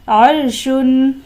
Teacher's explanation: را ساکن سے پہلے حرف پر زبر ہے، لہٰذا اس را کو بھی ہم پر پڑھیں گے، یعنی تفخیم کریں گے